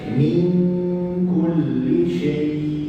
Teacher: Hurufnya bukan huruf yang tebal, bukan huruf isti'ala. Hurufnya huruf yang nipis. Jadi dengungnya mesti nipis, menghampiri kaf.